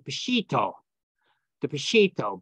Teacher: the final alap becomes an o sound in Western Aramaic